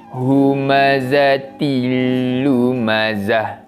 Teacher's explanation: Pun sama cara bacaannya, masukkan bunyi bacaan tanwin tadi pada huruf selepasnya dan dibaca tanpa dengung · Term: Idgham bilagunnah, idgham bila gunnah